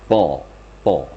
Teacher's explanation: Ya mirip dengan makhraj ta tapi diitbakkan ditebalkan